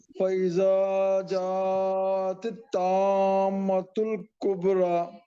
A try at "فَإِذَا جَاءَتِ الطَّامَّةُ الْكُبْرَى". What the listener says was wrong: ایک تو اس کو اچھے سے موٹا کیجیے اور پھر گننا بھی کیجیے. طامۃ الکبریٰ. فَإِذَا جا نہیں ذا کو بھی کھینچیے ایک الف کے برابر.